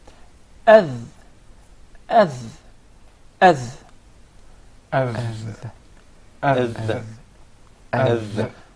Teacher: the dhal is articulated from the tip of the tongue and the bottom edges of the two top front incisors